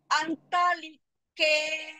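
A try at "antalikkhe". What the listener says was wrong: Antalike. The second A is short. Antalike.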